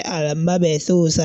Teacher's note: So the letter ba in this case is having al-qalqala, that is the effect.